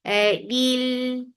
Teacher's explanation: Il for kasra, give e sound attached with lam. Lam will get sifa of tawassut, and tawassut is medium flow of sound. Lil, and then it is long and 2 counts long, and this is light.